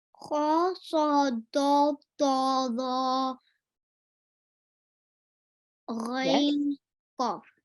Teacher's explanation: So when you actually, read these letters out, your upper lip is kind of, rounded. So they're called full mouth letters as well.